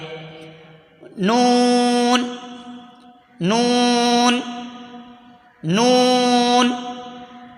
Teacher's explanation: जबान का किनारा और दांतों की जड़ से नून अदा होता है · जबान का किनारा और दांतों की जड़ से अदा होता है